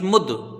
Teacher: دال حروف قلقلہ ہے، ٹھیک ہے، تو یہاں قلقلہ ہوگا، یہ لوٹتی ہی آواز آئے گی